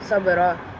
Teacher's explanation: karena huruf ba berharkat sukun dan bertempat di tengah kata, maka dibaca ringan atau tipis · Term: Qalqalah sugro